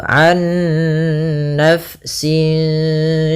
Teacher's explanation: Ah, ada bacaan idgham bighunnaah yang di mana dia di sini kita harus membacanya nunnya masukkan ke nun kedua dan disertai dengan gunah. Anna kesalahan yang terjadi tidak menahan gunahnya.